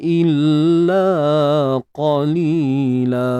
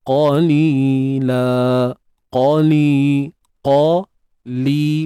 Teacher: huruf qaf tebal, angkat pangkal lidah kita.